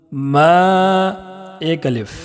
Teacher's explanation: میم میں الف مدہ ہے، اس کو 1 الف کے برابر کھینچ کر پڑھیں گے